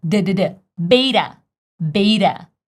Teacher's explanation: I tell you that this e is read as a and this T is read as fast D like flap t